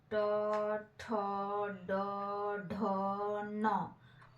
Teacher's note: उच्चारण मूर्धा के स्पर्श से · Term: ट वर्ग